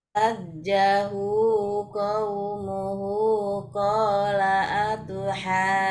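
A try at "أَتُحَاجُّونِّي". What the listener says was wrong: Oke, ya tinggal dipanjangkan saja atuhannya, Bu. Dicoba atuha, kola dari kola. Dari kola.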